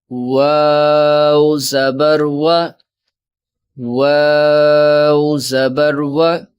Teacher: واو بھی حروف شفوی میں سے ہے، ہونٹوں سے ادا ہوگا